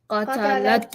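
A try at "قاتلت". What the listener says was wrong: Qatalat. If you don't make the qa part long and say qatalat, actually means she murdered. But qatalat means she fought.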